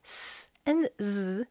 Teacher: you will notice that they are said in the exact same place in the mouth. The only difference between them is one of the sounds the voice is on and one of the sounds the voice is off.